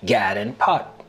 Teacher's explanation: The lot trap vowels are reversed for god and pat to sound like gad and pot.